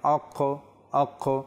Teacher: কফ যেটা দুই নুক্তাওয়ালা সেখানে একটু রিপিট আসে কলকলা যেটাকে বলা হয় কলকলার হরফ